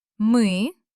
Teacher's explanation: On мы, my lips are tightly compressed, the sound is heavy.